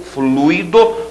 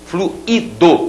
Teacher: uma coisa é fluido, que é o substantivo, o fluido, você tem o ditongo, e esse aqui com hiato, fluido, o particípio do verbo fluir